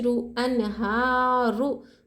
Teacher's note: रुआ के ऊपर हरकत ज़बर या पेश रहा तो रुआ पुर होगी, रुआ को मोटा पढ़ेंगे।